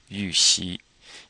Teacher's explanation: That you is kind of like a French you. You have to purse your lips